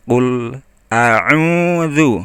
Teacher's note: Nah, u-nya 2 ketukan ya